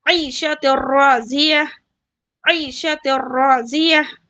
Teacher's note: یہاں پہ دیکھیے تا کو را سے ملا رہی ہوں میں اور ساتھ میں ادغام کر رہی ہوں اور ظاہر کر رہی ہوں، اظہار کا قاعدہ بھی ہو رہا اور ملا رہی بھی، اور حرکت ہے نا ایک دوسرے سے ملا کے پڑھ رہی ہوں میں.